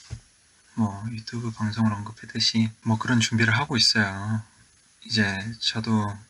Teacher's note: his speaking voice is low and not only is his voice low but it sounds soft